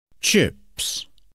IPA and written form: tʃɪps (chips)